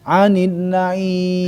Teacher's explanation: sempurnakanlah mad arid li sukun panjang di harokat kasroh